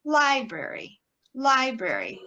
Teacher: That first syllable is the stress syllable.